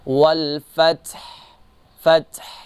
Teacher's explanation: نصر اللہ والفتح، والفتح جو ہے یہ ورڈ جو ہے اس میں سارے حروف جو ہیں صفت استفعال ہیں ان میں، لیکن آخر میں جو ہا ہے اس کی تھوڑی بہت آواز آنی چاہیے جب ہم وہاں پر وقف کریں گے، جیسے والفتح، فتح، تھوڑی بہت آواز ہے۔